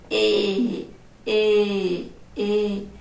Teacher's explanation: Ele sai pela boca e ele sai também pelo nariz. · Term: som fechado